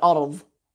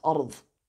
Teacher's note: With some native Arabic speakers, dad just becomes like a very heavy v instead of d.